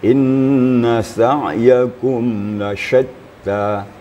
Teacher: Ini adalah shin yang sifatnya adalah tafashi, menyembur. Suara kita menyembur ya. Desisnya berserakkan gitu ya.